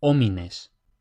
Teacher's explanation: la h igual que en español es muda, es decir, no suena.